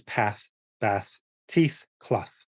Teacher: And then there's the th at the end of a word, which is unvoiced